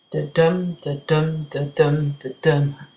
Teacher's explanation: So it's unstressed, stressed. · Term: iambic